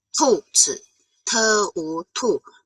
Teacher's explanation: 兔 pababa siya, so fourth tone.